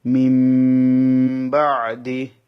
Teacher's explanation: নুন সাকিনের পর অক্ষর হচ্ছে বা, সেই জন্য আমি নুনটাকে মিম পড়বো, নুনটাকে মিম দিয়ে পরিবর্তন করে দেবো। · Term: ইকলাব